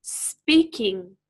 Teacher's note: in the word speaking we stress the first syllable